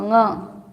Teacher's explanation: नाक में बोलना उसको, ङ। कंठ और नासिका ऐसे मिलान करके ङ बोलते हैं।